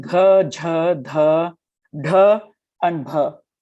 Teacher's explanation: the g has your vocal cords vibrating, and then there's a sudden h.